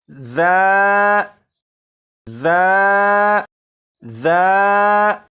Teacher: زبان کی نوک اوپر کے سامنے کے 2 دانتوں کے سرے سے لگا کر پڑھیں تو سی ٹی کی آواز ختم ہو جائے گی